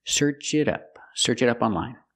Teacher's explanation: you hear the pronunciation of the T change to a fast D